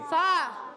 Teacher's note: فا اوپر والے دانتوں کے کنارے جب نیچے والے ہونٹ کے تر حصے سے لگتے ہیں تو ادا ہوتا ہے